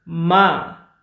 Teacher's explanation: Use ma, high level pitch, mean mother.